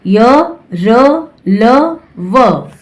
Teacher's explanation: इन व्यंजनों का उच्चारण करते समय जीभ मुंह के भीतरी भाग को मामूली सा स्पर्श करती है, इसलिए इन्हें अंतः व्यंजन कहते हैं।